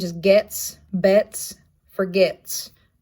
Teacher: it's an alveolar placement it is unvoiced